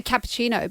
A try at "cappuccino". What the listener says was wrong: Once again, the U. You're not emphasising the U. Once you get the U out, you got it. It's cappuccino. Always, I think you guys just literally were saying just a moment ago, just think of the Sopranos, It's just bada bing, bada boom. Just always go the ooh